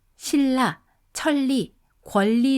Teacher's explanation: 우리말로 신라, 천리, 권리 등을 발음하면 니은이 모두 리을로 소리가 납니다.